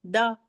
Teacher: देखिए, दाल का तो बहुत सिंपल है, द, जबान की नोक को हमने ऊपर के दांतों की जड़ में लगाया तो द, जी है ना।